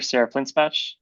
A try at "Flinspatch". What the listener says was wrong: Hi, and it's pronounced Flintspaw. The CH is silent.